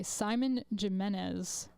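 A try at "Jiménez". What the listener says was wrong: Did you just pronounce the J as a J in Jimenez? Jimenez.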